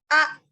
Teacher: hamzah yang sukun keluar dengan merapatkan kedua peti suara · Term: hamzah mati